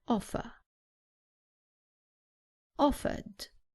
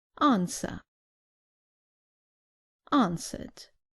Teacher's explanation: remember that in British English the r at the end is not pronounced